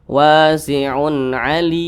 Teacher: panjangnya boleh dua harakat atau kira-kira dua ketukan boleh empat harakat atau kira-kira empat ketukan hingga enam harakat atau kira-kira enam ketukan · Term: Mad aridli sukun